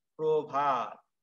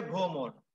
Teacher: অ এর সাথে র ফলা থাকলে সেটা ও উচ্চারণ হবে